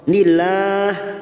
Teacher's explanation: lam jalalah kita baca tarkik karena sebelumnya ada harakat kasrah